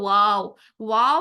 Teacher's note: तो वाव के लिए एक चीज को नोट कर ले कि वाव के लिए दांतों का यूज बिल्कुल नहीं होता है वाव के लिए जस्ट दोनों होठ यूज होते हैं और दोनों होठ को पूरी गोलाई के साथ पूरे गोल होने के साथ वाव अदा होता है हम होठों को इतना गोल करेंगे वाओ अदा करने के लिए